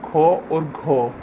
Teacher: जैसे क वर्ग है तो क वर्ग में को, गो और अंग ये तीनों अल्प प्राण वर्ण होंगे और ख और घ ये महाप्राण वर्ण होंगे